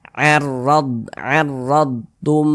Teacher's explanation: Huruf ra memiliki tanda baca fathah, maka huruf ra dibaca tebal, dibaca tabkhim, sehingga pangkal lisan kita itu naik terangkat ke atas ketika kita mengucapkannya. Huruf ra-nya kita tebalkan.